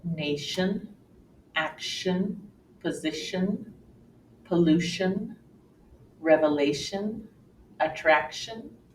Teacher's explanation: the T and I make the shh sound